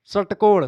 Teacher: षट्कोण में जीभ एकदम से मुड़ जा रही है फिर जाकर के आपके उससे मसूड़े से ऊपर वाले जो है मुरथा से टकरा कर फिर घूम करके आ रही है ठीक है और वहीं पर आप सपेरा बोलेंगे तो सपेरा में क्या हो रहा है मसूड़े पर ऊपर थोड़ा सा टच करती सपेरा सपेरा बहुत महीन सा टच करती है।